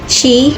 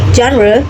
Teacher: Sh is voiceless while j is voiced. These are both alveolar fricatives with airflow through a narrow channel behind the alveolar ridge.